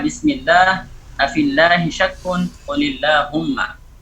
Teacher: lam yang muraqqaqah itu tidak ada penyempitan pada pangkal lidah, tidak ada penyempitan pada tenggorokan, kemudian juga tidak ada lengkungan pada tengah-tengah lidah